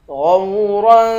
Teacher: غین کو واو کے ساتھ ملا کر غین کو موٹا پڑھیں گے